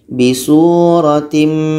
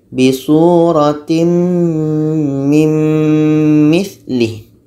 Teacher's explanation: Tanwin masuk kepada bunyi mim, bunyi tanwin hilang.